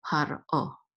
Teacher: The resh is not part of the syllable. It's par and then o